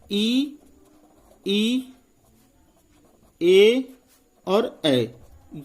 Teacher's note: इनका उच्चारण जो होता है जीभ के आगे वाले भाग से होता है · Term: अग्रभाग